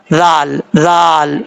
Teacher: زال بغیر سیٹی کے ساتھ پڑھا جاتا ہے. اس کا مخرج ہے زبان کا سیدھا اوپر والے دانتوں کے اندرونی کنارے سے لگے تو زال پڑھا جاتا ہے · زال کو پڑھتے وقت سیٹی کے ساتھ نہیں پڑھنا، بغیر سیٹی کے ساتھ پڑھا جائے گا. زال بغیر سیٹی کے ساتھ پڑھا جاتا ہے.